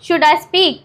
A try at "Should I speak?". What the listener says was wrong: थोड़ा सा देखिए, डिलीवर करने में थोड़ी सी स्पीड बढ़ाए. शुड आई स्पीक, देखिए ऐसे नहीं, शुड आई स्पीक. देखिए आपने क्या किया, शुड को एक अलग कर दिया, आई को अलग कर दिया और स्पीक को. हाँ, तो इससे क्या होता है कि आपकी फ्लुएंसी और आपका इम्पैक्ट नहीं पड़ता. ओके, इसे बोल सकते हैं शुड आई स्पीक.